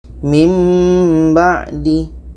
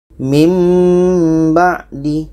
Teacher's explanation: Bermakna ini bunyi nun ini kita ubah kepada bunyi mim. Bunyi nun itu kita pindahkan kepada bunyi mim. Dan ada di sini dengung.